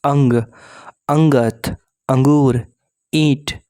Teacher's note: इसमें स्वरों के ऊपर अनुस्वार का प्रयोग होता है इसका उच्चारण नाक से होता है और उच्चारण में थोड़ी कठोरता होती है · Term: सानु स्वर